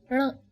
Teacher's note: Just try saying n, but roll back your tongue slightly.